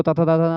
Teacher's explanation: ता था दा था ना दंत है